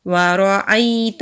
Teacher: واو کو جلدی پڑھیں گے، را کے اوپر زبر ہے، را کو موٹا پڑھیں گے، حمزہ کو یا سے ملائیں گے، تا کو نون سے ملائیں گے، نون کے اوپر تشدید ہے تو یہاں پر غنہ ہوگا، آگے خالی الف ہے، ایک الف کے برابر لمبا کریں گے۔